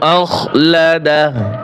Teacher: হামজা খ জবর আখ, লাম জবর লা, আখলা দাল জবর দা, আখলাদা হা উল্টা পেশ হু, আখলাদাহু, আখলাদাহু। ওয়াকফ করলে হা উল্টা পেশে টান হবে না, শুধু হা উচ্চারণ হবে